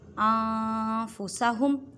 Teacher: انفسہم نون ساکن کے بعد فا ہے اور فا حروف اخفا میں سے ہے۔ ان نہیں کہنا، نون ساکن کی آواز کو چھپانا ہے ایک الف کی مقدار میں۔ ایک الف کا مقدار کا اندازہ ایک انگلی کو بند کرنے یا کھولنے میں جتنا ٹائم لگتا ہے اتنی مقدار میں۔